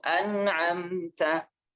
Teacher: An itu ada dengung di situ loh. Itu ada dengung. Tapi ya lebih ringan dengungnya.